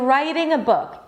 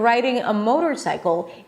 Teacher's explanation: The answer is they sound similar because it's absolutely the same sound. Yes, the T in writing a book and the D in riding a motorcycle is exactly the same sound.